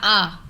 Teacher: विवृत में मुख द्वार पूरा खुला रहता है। इसमें हमारा मुंह पूरा खुला रहता है।